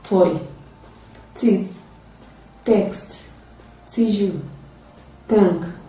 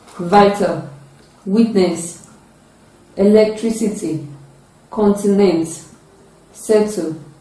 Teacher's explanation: It is a voiceless sound. It is produced with the tip of the tongue raised to the alveolar ridge. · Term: voiceless alveolar plosive sound